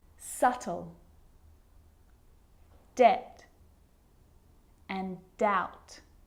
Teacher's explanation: my lips aren't closing and coming together to form the B sound I'm just pronouncing the T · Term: silent